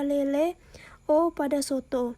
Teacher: bunyi yang dihasilkan dengan cara posisi lidah meninggi sehingga agak mendekati langit-langit keras, caranya rahang bawah agak merapat ke rahang atas, misalnya E pada lele, O pada soto. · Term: bunyi agak tinggi